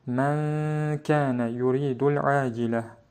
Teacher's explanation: Kəf hərfi də ixfa hərflərindən olduğu üçün burada ixfa qaydası baş verir. Sukunlu nundakı n səsi kəf hərfinin içərisində gizlədilərək oxunur.